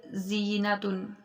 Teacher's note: اور جب ہم ذا پڑھیں گے، اس کی آواز باریک اور سیٹی والی ہوگی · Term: حروف صفیریہ